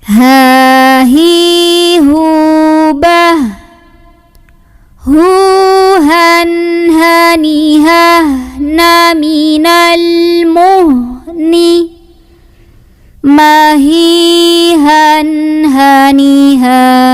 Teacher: Jadi ini H yang gede, H, H. Nah, ketika ada tanwin ketemu sama H, maka bunyinya masih an, masih jelas, hukumnya idhar halqi.